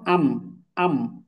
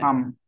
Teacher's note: যেমন মনে করেন মিম, তাহলে হামজা মিম যাওয়ার আম, আম। তাহলে মিমের মাখরাজ হচ্ছে দুই ঠোঁট থেকে, দেখেন দুই ঠোঁট এক জায়গায় লেগে যাচ্ছে